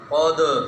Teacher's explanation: قلقلہ کرنا ہے نا، دال ساکن ہے، قاف کو موٹا بھی کرنا ہے اور دال پہ قلقلہ